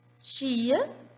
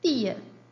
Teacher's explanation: Eu tenho ch e t. Eles não são fonemas, eles são alofones de um mesmo fonema.